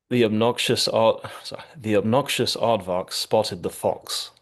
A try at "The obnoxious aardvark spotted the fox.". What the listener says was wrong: Excellent. You were very consistent with those sounds.